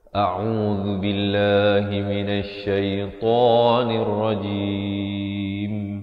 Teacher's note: Di akhir baru kita tutupkan rapat mulut menyempurnakan huruf mim.